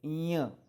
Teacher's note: य जैसा उच्चार लेकिन थोड़ा नाक से